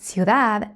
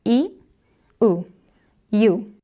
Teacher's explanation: In the word ciudad, there are two closed vowels.